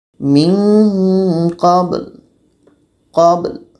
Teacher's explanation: Mesti ba ini kita pantulkan dan la ini pun terdengar.